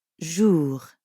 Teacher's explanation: the R at the end of jour doesn't really sound like an English R. You should feel that R in your throat. Jour. Yeah, almost like you're gargling or clearing your throat.